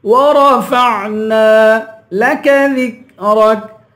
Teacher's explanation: چھوٹا کاف ہے، یہاں پر چھوٹے کاف کی آواز نکالیں گے، باریک کریں گے